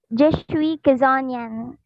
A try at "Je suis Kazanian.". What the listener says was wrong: Ah, oui, très bien.